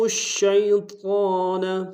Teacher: توشی واضح کریں گے، شین کو یا کے سامنے آئیں گے، یا لین بغیر کھینچے پڑیں گے